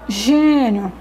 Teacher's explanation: Olha a pronúncia sai um pouco assim nasal né que a minha boca não abriu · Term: som fechado